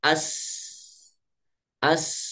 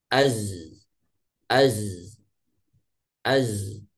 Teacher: iitu memiliki sifat Hames maka pita suaranya terbuka as as tapi pada huruf Zai yang memiliki sifat jahr ini pita suaranya tertutup Az Az Az ini perbedaan pita suara ya pada sifat hams · Tapi pada huruf zai yang memiliki sifat jahar, ini pita suaranya tertutup.